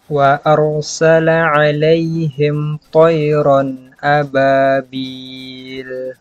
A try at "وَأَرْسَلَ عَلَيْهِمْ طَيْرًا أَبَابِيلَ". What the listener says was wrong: Taknya ditipiskan lagi, jangan dia mengikut tebal.